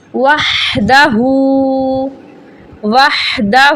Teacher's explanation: ہا کی آواز حلق کے درمیان سے نکلتی ہے اور زبر زیر پیش کو بغیر لمبا کیے بغیر جھٹکا کیے پڑھا جاتا ہے۔